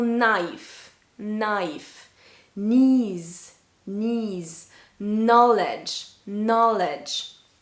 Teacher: You can hear I'm only saying the N and not the K. The K is silent.